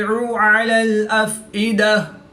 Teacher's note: گول تا کو وقف کی حالت میں ہا ساکن سے تبدیل کر کے پڑھیں گے